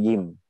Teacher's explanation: intinya pada saat jahar ada getaran di tenggorokan